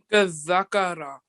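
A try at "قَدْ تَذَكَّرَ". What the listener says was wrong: Okay, now just remember you can't give the Z sound here. Okay, has to be the sound, the sound. So round mouth at the qaf, and when you're joining, give a the sound here. قَذَّكَرَ.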